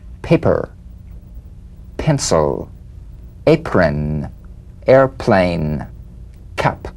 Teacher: The whispered tap of this drumbeat P is played with a light springing apart of the lips, just like for the B. On the springing away, feel a B in a whisper without any puff of air. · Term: unvoiced labial stop consonant